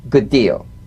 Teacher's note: You don't need to fully pronounce the first D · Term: identical